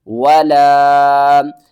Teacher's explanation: ولا الف کے اوپر مد ہے، اس کو ہم نے 3 الف کے برابر کھینچنا ہے اور الف سے پہلے زبر بھی ہے، حروف مدہ ہے، تو